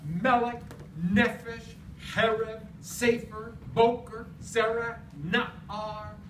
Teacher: What creates the class is penultima stress.